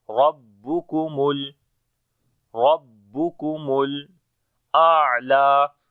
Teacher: Rab we read in heavy sound, on the ba we make bit strong voice.